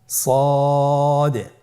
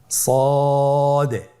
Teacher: জিহ্বার আগা সামনের নিচের দুই দাঁতের পেট ও আগার সঙ্গে লাগিয়ে উচ্চারিত হয়।